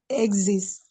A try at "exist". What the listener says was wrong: You're stressing zest. So your voice should go exist.